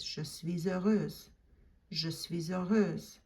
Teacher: Make sure you do the liaison, because heureuse starts with a vowel sound, and suis ends in a silent S that you normally don't pronounce. But in this case, you lace it together and it sounds like this, je suis heureuse.